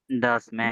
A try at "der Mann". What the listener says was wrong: দিয়া মান, ম্যান না মান।